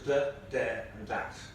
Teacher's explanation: So we have the in function words like the and there and that come out as de, der and dat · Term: TH stopping